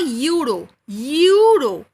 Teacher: when I say euro, even if it is starting with E, the pronunciation is coming that of Y